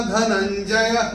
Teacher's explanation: वो जो विसर्ग दिख रहा है य के बाद चरण की समाप्ति पे आ रहा है, तो उसका उच्चारण केवल और केवल ह ही होगा।